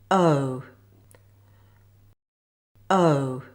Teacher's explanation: Keep this sound very short, then make the sound oo by moving the tongue upward and backward. The lips move from neutral to a more rounded shape. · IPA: /əʊ/